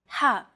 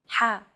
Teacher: the letter ha is pronounced deep in the throat ha this sound is pronounced very deep in the throat you